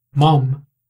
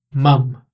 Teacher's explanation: mom, em inglês americano, que é um som mais de O, mom, e mum, em inglês britânico, que é um som mais de A, mum.